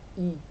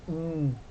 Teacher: Ele vai nasalizar aquele I, não é I, é IN. Esse I vai ficar com som saindo pelo nariz.